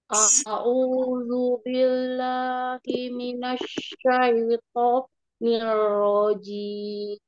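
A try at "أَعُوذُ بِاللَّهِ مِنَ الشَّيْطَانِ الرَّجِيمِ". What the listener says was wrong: A'udzu, a'udzunya di a-nya di domahnya, a'udzu disempurnakan. Di minas syaitoni itu seperti terputus, minas syai terputus, minas syaitonir rajim. Tadi seperti ada sakta ya.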